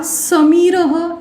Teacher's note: When I am pronounced, the tip of the tongue touches the teeth slightly. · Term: दन्त्य